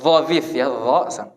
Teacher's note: lidahnya keluar sedikit, nempel ke gigi seri bagian atas. Nempel ke atas ya, bukan dua-duanya.